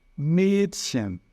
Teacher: algumas pessoas vão falar o A com trema como se fosse um E mais fechadinho